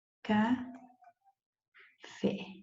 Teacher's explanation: porque aqui está a sílaba tônica e qual é ela é a última